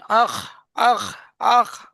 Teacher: খটা হয় গলার শেষ ভাগ থেকে উচ্চারণে